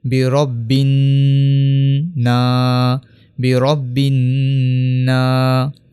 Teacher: جب بھی نون کے اوپر تشدید آئے تو اس کے اوپر غنہ کرتے ہیں۔ غنہ کہتے ہیں ناک میں آواز کو لے جانے کو۔